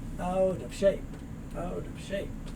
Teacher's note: The T moves over, it becomes that soft D sound.